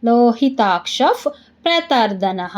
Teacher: ಕ್ಷ ಮುಂದೆ ವಿಸರ್ಗ ವಿಸರ್ಗದ ಮುಂದೆ ಪ ಅದಕ್ಕೆ ಅರ್ಧ ಪ